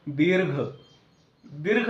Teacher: दीर्घ ईवर आपण काय करतो, थोडासा जोर देऊन तिथं ईवर थांबलेलो असतो, म्हणून या ठिकाणी काय असते, दुसरी मात्रा, 2 मात्रा वेळ लागलेला असतात, म्हणून याला दुसरी वेलांटी दिलेली असते. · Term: दीर्घ उच्चार